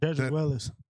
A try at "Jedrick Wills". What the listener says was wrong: No, I think it's Wills, bro. I think it's Wills. I don't think it's second eye in there.